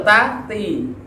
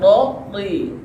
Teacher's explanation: kalau ta sama da ini datar, ta, da. Tapi ketika to ini naik, jadi tebal. Istilah terangkat lidahnya.